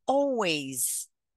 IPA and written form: ˈɑːl.weɪz (always)